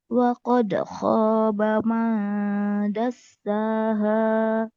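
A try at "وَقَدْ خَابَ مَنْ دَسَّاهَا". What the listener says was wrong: Bagus.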